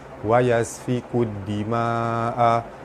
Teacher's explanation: Wa yasfikud dima'a, alif lam bertemu dal, alif lam syamsiyah, terus cara baca dia terus masuk ke dal